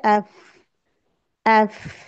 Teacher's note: फ की हम्स की साउंड आनी चाहिए